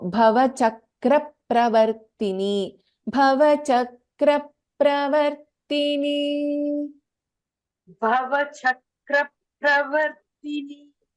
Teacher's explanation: Here there is a dvitvam in ka, and again there is a dvitvam in pa.